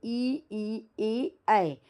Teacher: इ मतलब यह हमारे तालव्य से जीभ के आगे से यह टच हो रहा है। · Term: अग्र स्वर